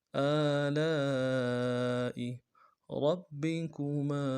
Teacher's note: لام کے ساتھ الف مدہ ہے، الف مدہ کے اوپر مد اصلی ہے، تین الف دال میں کھینچیں گے، حمزہ کو نرم سے ادا کریں گے۔ آلاء ربکما را کو موٹا کرنا ہے، با کے ساتھ ملانا ہے، با کے اوپر تشدید ہے، زور دیں گے، اگلے با کو نرم سے ادا کریں گے، کاف کو نرم سے ادا کرنا ہے، میم کے ساتھ الف مدہ ہے، ایک الف دال میں کھینچیں گے۔